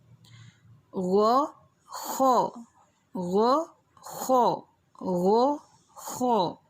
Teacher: ان کو تھوڑا ہیوی، مستعلیہ، موٹا کر کے ادا کیا جائے گا۔ حمزہ ہ، عین ح موٹے حرف نہیں ہیں، لیکن ادنیٰ حلق میں غین، خا موٹے حروف ہیں۔